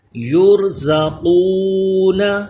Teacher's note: را پر پڑھا جائے گا کیونکہ اس سے پہلے پیش ہے، زا پہ سیٹی پیدا ہو، قاف پر پڑھا جائے، حروف مستعلیہ ہے۔